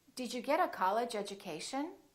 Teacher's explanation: When the T is followed by a U, it becomes chew. And when the D is followed by a U, it becomes Jew.